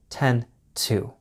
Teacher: When you don't follow 10 to with the hour, you don't get the d sound. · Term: sharp t sound